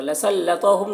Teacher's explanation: लसल्लतहुम, तो को पुर पढ़ना है। हुम के मीम में इज़हार शफ़वी हो रहा।